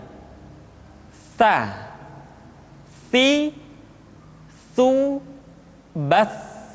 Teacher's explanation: Tsa dikeluarkan dengan menyentuhkan ujung lidah kita dengan dinding dua gigi seri bagian atas. diucapkan dengan suara dan nafas yang terdengar mengalir. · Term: huruf tsa, huruf sa